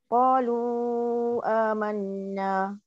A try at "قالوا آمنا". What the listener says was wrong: yes correct